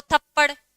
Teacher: इन शब्दों को बोलते समय हमारी जीभ झटके के साथ ऊपर जाती है और झटके के साथ नीचे आती है। जैसे कि बोलो थप्पड़, बोल करके देख लो, फटाफट अपनी जीभ झटके के साथ ऊपर जाएगी और झटके के साथ क्या आती है? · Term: उच्चिप्त व्यंजनों